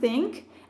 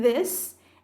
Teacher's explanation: we block or constrict the airflow by placing the tip of our tongue against our upper teeth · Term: interdental consonants